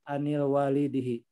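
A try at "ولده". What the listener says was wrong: An waladihi, tidak, enggak ada alif.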